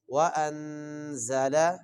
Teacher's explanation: تو وَأَنزَلَ، یہاں پر غنہ کر کے پڑھیں گے، وَأَنزَلَ، زا کو اور ذال میں فرق کرتے ہوئے، ذال اس کو نرمی سے اور زا یہاں پہ سیٹی والا ہے